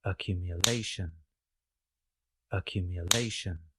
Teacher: Accumulate, accumulate. But in the noun accumulation, we place the primary or main stress closer to the end of the word. We have the secondary stress at the beginning of the word.